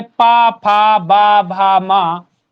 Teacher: इनका उच्चारण स्थान ओष्ठ से किया जाता है